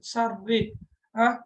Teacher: இதுல பாருங்க ஷர்ரி கஸ்ரா வந்திக்குது. எனவே ரா வந்து கஸ்ராவாக வந்தால் அந்த ராவை நாங்க எப்படி ஓதணும்? மெல்லினமாக ஓத வேண்டும்